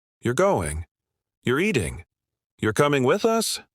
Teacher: No rising intonation, no clear question tone. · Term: question that sounds like a statement